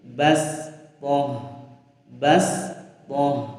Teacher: Shadnya kita baca sin. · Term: huruf shad dibaca sin